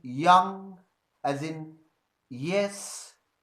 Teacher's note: the tongue goes up and it touches the hard palate so the hard palate and the front part of the tongue come in contact with each other and palatal sound is produced · the front part of the tongue goes up and it touches the hard palate